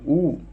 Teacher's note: ऊ ऐसा लगा है जीभ पीछे से ऊपर उठ रही है। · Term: पश्च स्वर